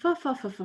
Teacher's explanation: Each voiced sound was replaced with an ah, and each unvoiced sound was replaced with a f. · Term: fa-fa-fa speech